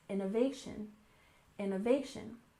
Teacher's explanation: innovation with stress on the third syllable, innovation, innovation.